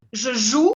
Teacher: no se pronuncia la E, se pronuncia hasta la OU y es U, como la U en español